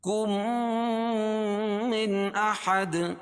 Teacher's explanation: کم ادغام کریں گے غنہ کے ساتھ، اس کو ادغام شفوی بولیں گے